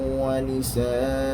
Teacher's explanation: apabila kita waqaf, maka dia mesti dibaca dengan bacaan dua harakat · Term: mad iwad